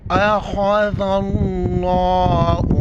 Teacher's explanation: لفظ اللہ کے لام کو موٹا کر کے پڑھیں گے